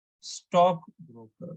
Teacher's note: stress the first word harder than the second one